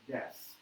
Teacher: it really could be desu, but we don't say the U, or it's hardly audible at all. You'll see that usually with the E's and the U's are the ones that get sort of diminished a bit by comparison to the A's and A's, O's, and A's.